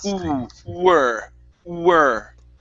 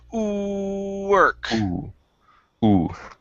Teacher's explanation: you don't want to pronounce a V, you want to pronounce a W, and the way to do that is by saying ooh